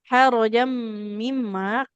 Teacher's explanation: dia tanwin ya, bertemu dengan mim di depannya maka dileburkan ke huruf mim.